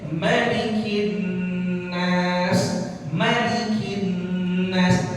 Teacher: Malikin Nas mimnya semua riwayat bacaan Quran dibaca pendek. Malikin Nas, jangan dibaca panjang.